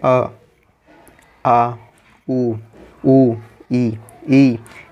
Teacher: इसमें केवल मुंह से ही हवा निकलती है, नाक से नहीं निकलती।